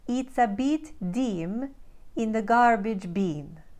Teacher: The crisp I vowel sound found in words like fit and crisp becomes a pure vowel E in the Ukraine accent.